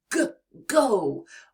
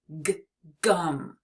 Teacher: When you release your air, it's almost like a gentle push, and your vocal cords vibrate to make that deep sound